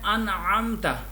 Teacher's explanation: نون کے بعد حروف حلقی میں سے عین آ رہا ہے، تو یہاں پہ اظہار مسٹ ہے. اگر ہم اظہار نہیں کریں گے تو ورڈ غلط ہو جائے گا، تو اگر یہاں پہ اظہار نہیں کیا تو یہ غلطی لحن خفی میں آ جاتا ہے.